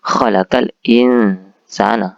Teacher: Alif lamnya itu dibaca jelas, ya, tidak samar seperti huruf alif lam syamsiah. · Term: al-qamariyah